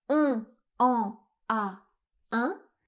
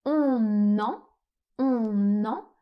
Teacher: Si vous prononcez la phrase de cette façon on comprendrait même pas le sens on est obligé de faire une liaison donc on fait une première liaison entre le N et le E. On en, on en, et on fait une autre liaison entre le N et le A.